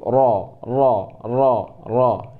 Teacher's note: Peringkat pertama, lidah kita angkat paling tinggi, yaitu ro.